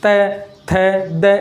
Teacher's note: आप उच्चारण करके देख सकते हैं, तय, थ, द, यानी हमारी जो जीव है, हमारी जो जुबान है वो दांतों पर ज़्यादा स्पर्श कर रही है और दांतों पर प्रेशर हवा का ज़्यादा है, इसलिए इसका नाम होता है दंत्य।